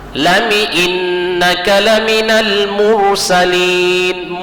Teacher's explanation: Ro-nya itu baris mati dia. Tapi kenapa dibaca tafkhim? Karena sebelumnya barisnya di atas. Huruf sebelum ro yang berbaris mati tadi barisnya di atas.